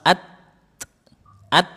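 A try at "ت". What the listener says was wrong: Nah gitu. Iya.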